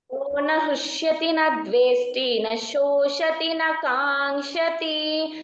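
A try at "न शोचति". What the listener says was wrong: ఇందాక తేడా చెప్పావు అది శోషతి కాదు శోచతి నా శోచతి నా కాంక్షతి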